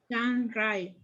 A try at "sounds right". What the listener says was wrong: Remember, everybody, in English, it's very important you pronounce the S in the best way possible. Sounds right. the T, like right, at the end, right. Not right, right, right.